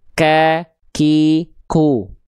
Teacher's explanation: Oke, nah kalau teman-teman tepat melafalkan huruf kaf dilafalkan dari sini, ya, oke, dari pangkal lidah yang disentuhkan ke langit-langit antara lunak dan keras, ya, itu dia akan keluar percikan nafasnya, ka, ki, ku.